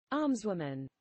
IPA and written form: ˈɑːmzwʊmən (almswoman)